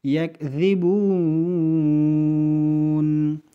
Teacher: یکذبون ادھر ذال ہے، ذال، یہ ذال کا مخرج یہ ہے کہ زبان کے سر اور اپنے اوپر جو دو دانت ہے اس کے سر سے، زبان کے سر اور اوپر دو دانتوں کے سر سے ذال کا مخرج ادا ہوتا ہے۔